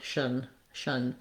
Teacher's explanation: And then we end with a syllabic N, going right from that SH sound. So the T here, the T-I-O-N, rather than any kind of form of T sound, is an SH sound, shun.